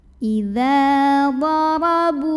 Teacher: ra dibunyikan secara tafkhim karena ra-nya berbaris fathah. Maka bacanya ditebalkan, pangkal lidah dinaikkan. Idza darabu, bu mad tabi'i karena ada waw sukun yang didahului baris dhammah, maka ba yang dhammah dipanjangkan 2 harokat.